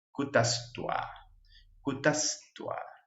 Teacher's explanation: Si al bisarga le sigue una T, la misma T del español, si le sigue una T, se convierte en la S. Entonces, bisarga es reemplazado por S.